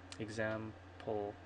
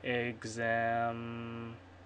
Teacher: when there's a plosive, like example in between the M and the P, you're going to get a little quiet for a little while you close your mouth